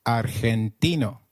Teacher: In Spanish, G, when followed by E or I, is pronounced like a throaty H.